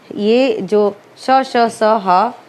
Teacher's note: ऊष्म व्यंजन वे व्यंजन होते हैं जिनका उच्चारण करते समय हमारी वायु थोड़ी सी ऊष्मा के साथ निकलती है।